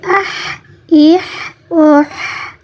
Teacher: اس پہ کوئی قلقلہ نہیں ہے اور یہ باریک ہے، اس کو رگڑ کے نس کے ساتھ نہیں پڑھیں گے